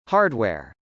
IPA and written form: hˈɑrdw.ɛr (hardware)